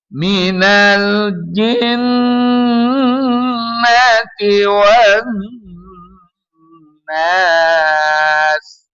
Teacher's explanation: Tajibul guna wajib didengungkan, nun bertasydid itu. Jadi ditahan dulu. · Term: Tajibul gunnah